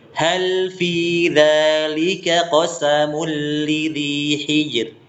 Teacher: Kalau ada roh sukun atau yang disukunkan karena waqaf, sebelumnya ada huruf sukun dan sebelumnya kasroh. Ini dihukumi sebagai roh tarqiq, roh yang tipis. Kalau ada huruf sukun atau disukunkan karena waqaf kurang berarti, tapi sebelumnya ada huruf sukun, di sini huruf sukunnya huruf jim, dan setelah sebelumnya lagi ada huruf harokat kasroh, maka tipiskan huruf rohnya.